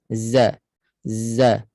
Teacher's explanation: makhraj Zai hujung lidah sentuh pada di antara gigi bawah dan Gigi atas Za Za dia ada sifat safir bisiran bunyi bunyi macam lebah